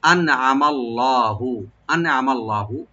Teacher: এখানে খেয়াল রাখবেন নুন সাকিন এখানে এজাহার হবে, গুন্না করবেন না। আর আইনটাকে ওপেন করে পড়বেন, মিমটাকে ওপেন করে পড়বেন, আর লামে লব্ধ জালার সাথে মিলাইয়া লব্ধ জালালাকে ডিপ করে পড়তে হবে।